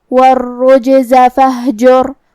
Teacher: آخر میں حرف الرا پہ جزم ہے، یہاں را کا حکم ہے تفخیم کیونکہ اس سے پہلے والے حرف پہ مطلب جیم پہ پیش ہے، تو ہم را کو موٹی آواز میں پڑھیں گے